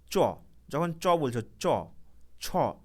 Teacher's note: তখন দেখবে যে জিহবার যে আগাটা সেটা কিন্তু আমাদের তালুর মধ্যে স্পর্শ করছে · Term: তালব্য বর্ণ